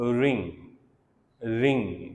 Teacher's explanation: so it's a व्हीलर sound, रिंग, रिंग, back of the tongue और व्हीलर ये आपस में टच हो रहे हैं